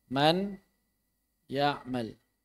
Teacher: bunyi ghunnah dari nun masih ada dari hidung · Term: idgham naqis